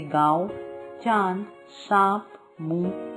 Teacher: इसका उच्चारण करते समय वायु नाक और मुख दोनों से बाहर निकलती है। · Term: अनुनासिक